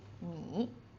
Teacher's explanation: The third tone, but when it's put with other words, we just go low